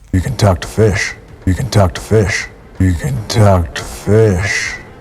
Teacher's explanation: downward intonation at the ends of statements